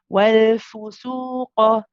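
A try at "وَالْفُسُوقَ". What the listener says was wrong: Be careful not to say for, though. Your dhamma on the fa is starting to slip a little bit. Wal fusuqa.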